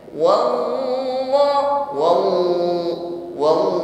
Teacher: pengucapan lafaz Allah ini tidak ditekan sampai suaranya tertahan. Bukan wallahu, wallahu, ya.